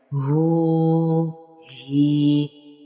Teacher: ہا جو حلق کے آخری حصے سے ادا ہوتا ہے تو اس کو تھوڑا موٹا ہی ادا کریں گے. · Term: موٹے والا ہا